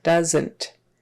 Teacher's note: that second syllable is just more like an NT squished together. Doesn't. And the OE is pronounced like a short U.